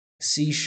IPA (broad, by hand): siː ʃɑɹp